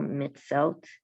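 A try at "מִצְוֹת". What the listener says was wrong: Mitzvot. Whenever you see that, it has the V and the vowel and the consonant side. You read both. I don't know why it's written like that, but it's always mitzvot. Mitzvot.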